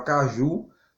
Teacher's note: a palavra caju, a sílaba mais forte, a sílaba tônica é o JU